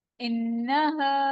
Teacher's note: नून पे गुन्ना होगा और अलिफ मद्दा हो रहा है